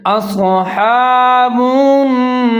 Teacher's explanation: تشدید ہے، تو نون اور با دونوں ملا کے پڑھیں گے، یہاں پر گنہ کریں گے، 3 سے 4 سیکنڈ تک آواز کو ناک میں لے جائیں گے